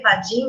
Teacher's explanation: padrinho que não vira mais nem padrinho é padin mesmo porque o r some